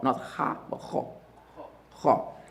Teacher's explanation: the a sound that is added to the kha, the fatha now gets heavy also. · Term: heaviness